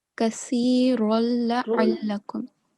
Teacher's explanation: there is not going to be any sound of noon.